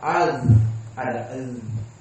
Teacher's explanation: Za idza waqafat maka dia rokhawah.